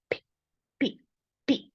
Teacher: The P has a lot of aspiration. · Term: P with aspiration